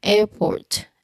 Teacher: The R at the end of syllable might be silent or very subtle since it's nonrotic.